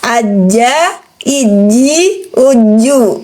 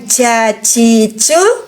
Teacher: kalau bunyi ci, teman-teman, ada percikan napas keluar. Huruf jim tidak punya hak dihamas, haknya dia dijahar.